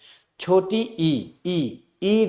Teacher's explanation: छोटी ई में जिह्वा कहाँ है, आगे है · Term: अग्र स्वर